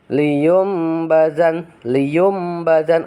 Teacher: nun mati atau tanwin bertemu dengan huruf ba dalam bacaan ini bacaan nun mati atau tanwin berubah menjadi Bunyi mim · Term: iqlab